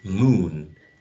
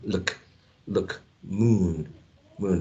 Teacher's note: the u sound is um longer right and tense moon but when we say look we're actually using this um